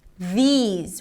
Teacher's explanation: We begin with a voice TH, but here we have a high E sound. These, ending with a Z sound.